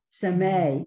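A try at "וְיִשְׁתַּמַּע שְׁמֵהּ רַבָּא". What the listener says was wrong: Sh. You got your shins on the wrong side.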